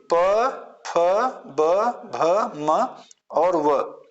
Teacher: ये ओष से बोले जाने वाले वर्ण है इसलिए इसको हम ओष कहते हैं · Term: ओष्ठ